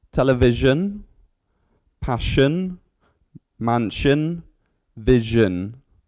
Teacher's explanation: Okay, so when you join S, I, O, N, you get a similar noise to sh, but it's more of a Z noise. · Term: zhin noise